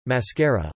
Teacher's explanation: short rising as in màskara ('eye makeup') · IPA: /ˈmǎskara/